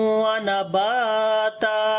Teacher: यहाँ पर तनवीन के बाद वाव आ गए, इदगाम गुन्ने के साथ करेंगे, बा को लंबा करेंगे, अलिफ मद्दा है, और जब रुकेंगे तो ता के ऊपर एक जबर पढ़ेंगे, तो यहाँ पर भी अलिफ मद्दा बन जाएगा।